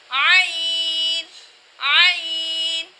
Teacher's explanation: عین کی آواز کو ہم حلق کے درمیان سے نکالتے ہیں